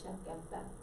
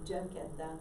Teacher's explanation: They don't have a CH sound, it's just a sh in Spanish.